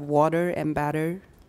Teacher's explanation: a change from a voiceless consonant to a voiced consonant